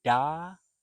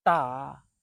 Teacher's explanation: D for da as in English D. It's lower. It's more resonant. Whereas the Chinese D is sharper and higher.